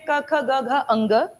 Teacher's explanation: क वाली लाइन कंठ है, बिल्कुल मेन कंठ गले से।